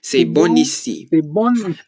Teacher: And that's because when you say the word bon and it's followed by a word that starts with a vowel, so that's A, E, I, O, U, you can pronounce the N more clearly. So you would say c'est bon ici rather than c'est bon ici.